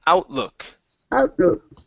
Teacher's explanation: open the mouth just a little bit more on look instead of luk